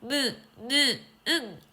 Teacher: 그런데 무, 느, 응 발음을 코를 잡고 해보면 무, 느, 응 기역을 발음할 때보다 코가 훨씬 울리는 걸 느낄 수 있어요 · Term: 비음